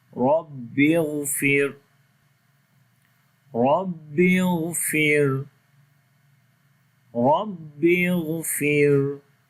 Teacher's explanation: Ra we read in heavy sound due to fatha sign on it, Rabbi ighfir, and in the second Ra this we read in light sound due to sukoon sign on the Ra, and there is kasra before the Ra, that's why this Ra will be light.